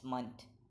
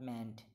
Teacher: Notice the last syllable of this word, it's munt, not meant.